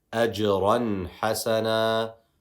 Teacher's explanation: In this case, we know we are pronouncing the noon sakin clearly.